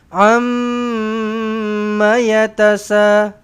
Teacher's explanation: Mim sabdu ini dengung 2 harakat, tetapi ma-nya itu 1 harakat sahaja.